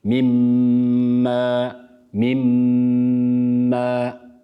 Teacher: Sakin olan nun harfini ne yapıyoruz harekeli olan hemen ardından gelen Mim harfine katıyoruz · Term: tam idgam